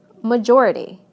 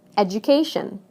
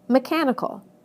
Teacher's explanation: listen to how the stress moves right to the syllable immediately before the suffix